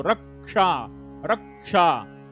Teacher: र वरती क चा आघात येतो